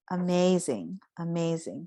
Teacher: So I think we emphasize the may part. So because of that, I put an accent mark right next to the may.